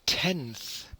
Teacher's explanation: in tenth we have a th following the n which makes the pronunciation the articulation of n slightly different